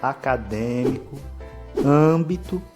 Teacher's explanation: você perceba que a vogal ela tem a pronúncia fechada